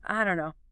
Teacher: Or, I don't know, very often loses the T in don't, and it all merges together into, I don't know.